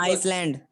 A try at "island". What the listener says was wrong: Not Iceland, island. S is silent. Don't say Iceland.